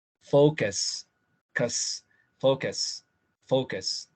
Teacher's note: cuando se hace estrés en la primera sílaba, la segunda tiene que sonar más suave, supremamente suave, casi no hacen esfuerzo